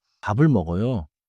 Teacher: The 비읍 sound links into 을, so it sounds smooth · The final consonant moves into the next vowel sound. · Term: linking